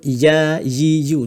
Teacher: lidah kita bahagian tengah ni dia akan naik ya yi yu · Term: huruf ya